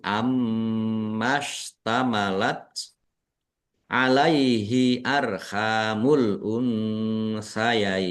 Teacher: mim tasdid dibaca ghunah atau mendengung. Ditahan biar tampak mendengung.